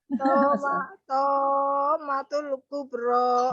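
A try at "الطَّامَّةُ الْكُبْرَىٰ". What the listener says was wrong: Nggak boleh ditom, nggak boleh ditaber, tom, nggak boleh. Naam ya, mim tasdid ingat-ingat, mim tasdid nun tasdid tidak boleh dinaber. Karena di sini hukumnya mad lazim kilmi mutsaqal atau mad lazim mutsaqal kilmi. Toknya dibaca panjang 6 harokat ya. Mad lazim kilmi mutsaqal itu pengertiannya apabila mad tabi'inya di sini alif sebelumnya fathah, toknya kan fathah bertemu dengan huruf yang bertasdid. Jadi toknya dibaca panjang 6 harokat. Ya, yang bertasdidnya kan huruf mim. Mimnya kan wajib gunnah.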